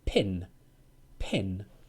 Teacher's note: Pa is not voiced. It's more of a puff of air. Air comes out.